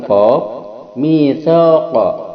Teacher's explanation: ketika qa itu ada penekanan pada pangkal lidah, ditekan dan tidak ada hembusan napas, maka dia adalah syiddah jahr.